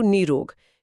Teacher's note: विसर्ग हट गया और उससे पहले का ह्रस्व स्वर नी वो दीर्घ नी बन गया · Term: विसर्ग संधि